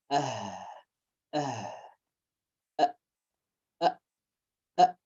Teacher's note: the sound comes from the deepest part of the throat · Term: Hamza, al-ain and al-ha